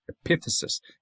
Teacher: epithesis, accent on the second syllable. But go to the adjective that describes that region, the epithesial region. · Epiphysis, accent on the 2nd syllable.